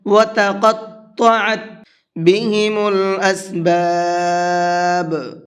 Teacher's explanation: تو جب تا اور طا ایک ساتھ میں آ جاتے ہیں تو تھوڑا سا اس کو پڑھنا ہارڈ ہوتا ہے، کیونکہ تا نرمی کے ساتھ میں پڑھا جاتا ہے اور طا کو پر کر کے پڑھا جاتا ہے، منہ بھر کے پڑھا جاتا ہے